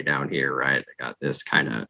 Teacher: a lot of times people will drop into uh into vocal fry they'll go way down here